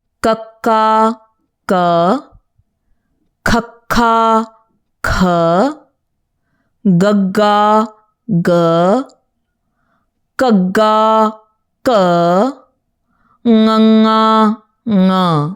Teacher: All the letters in this row are produced when the back of the tongue meets the roof of the mouth.